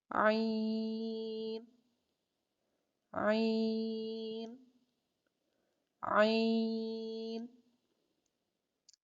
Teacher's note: عین کو ادا کرنے کے لیے जुबान पीछे हलक की तरफ मजबूती से ले जाते हुए बारीक आवाज में